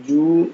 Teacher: ju dibaca panjang 2 harakat, ada dhammah bertemu waw sukun